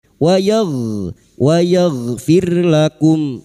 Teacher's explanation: ghain sukun, hati-hati jangan dipantulkan